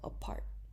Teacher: for example in the word apart which has two syllables and there's aspiration in part and the P of part because it is the beginning of a stressed syllable